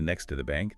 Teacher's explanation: Simplifies to next to the bank. The to gets reduced.